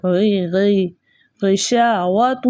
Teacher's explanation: غین جو ہے موٹے حروفوں میں سے موٹا پڑھا جائے گا. اس کے علاوہ منہ بھر کے اس کی ادائیگی غی غی غشاوۃ.